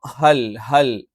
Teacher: ഹ എന്ന് പറയുമ്പോൾ തൊണ്ടയുടെ ഏറ്റവും താഴ്ഭാഗത്തുനിന്ന് വരുന്ന ഒരു അക്ഷരമാണ്